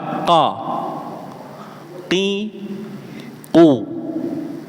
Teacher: huruf qof tadi nggih keluar dari pangkal lidah, Pak.